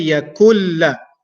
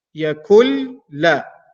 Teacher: The sound and the pronunciation of noon will be gone completely, and the lam will carry an automatic shadda. So walam yakulla. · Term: idgham